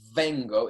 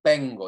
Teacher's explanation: It's not vengo, it's vengo. It's a bilabial consonant. It's not a fricative consonant. We're not saying v, we're saying vengo, okay?